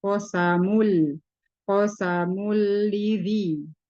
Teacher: tanwin bertemu dengan huruf lam, yaitu berarti idgham bila gunnah, dileburkan tanpa didengungkan. Jadi tidak ditahan.